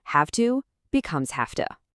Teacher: Assimilation kicks in. The V sound basically gets ready for the voiceless T that's coming and it becomes voiceless itself.